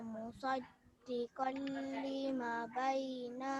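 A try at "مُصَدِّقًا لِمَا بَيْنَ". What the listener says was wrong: Lima panjang, ma panjang. Ulang lagi sekali. Ni musaddiqan lima, ma panjang.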